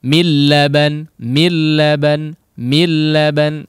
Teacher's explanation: Millaban, langsung menjadi seolah menjadi tasydid, ya, atau memang dileburkan, ya, nun sukunnya tersebut kepada huruf lam, sehingga seolah tidak ada nun sukun diganti lam yang bertasydid, ya. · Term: idgham Bi lauhun